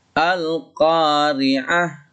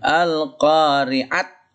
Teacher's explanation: ketika dia mati atau nggak dibaca, maka dia berubah menjadi ha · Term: tak marbutah